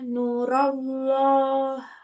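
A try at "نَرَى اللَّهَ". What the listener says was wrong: Hatta narallaha, bukan narullaha, tapi narallaha.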